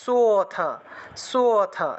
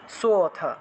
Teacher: এই লুপ্ত অ এর উচ্চারণটা সটাকে টান দিয়ে উচ্চারণ করলেই অ এর উচ্চারণটা চলে আসে